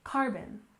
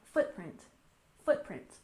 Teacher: And next we have carbon footprint, with stress on the first syllable in carbon, carbon. And footprint, we also stress the first syllable, footprint, footprint.